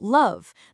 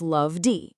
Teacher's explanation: That v is for sure vibrating. So it's love D. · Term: buzzy